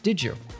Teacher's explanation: When we have a D followed by a Y sound, we often morph them into a J sound. So instead of did you, it becomes did you. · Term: connected speech